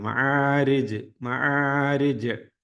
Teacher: മഹാരിജ് ജീമില് വഖഫ് ചെയ്യുമ്പോൾ ഒന്ന് കട്ടികൂട്ടി ഉച്ചരിക്കണം